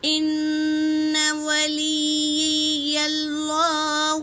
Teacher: نون پر تشدید ہے میری بہنوں، غنہ کریں گے، اور یا پر تشدید ہے، اسے 2 بار پڑھیں گے، اور اللہ کے نام سے پہلے زبر ہے تو اللہ کا نام پر پڑھیں گے۔